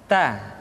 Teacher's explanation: huruf ta keluar dengan menyentuhkan ujung lidah kita dengan gusi-gusi gigi seri bagian atas ta kemudian huruf ta ketika diucapkan terdengar ada nafas yang mengalir